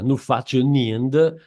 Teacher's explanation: donc avec allongement du F initial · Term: raddoppiamento sintattico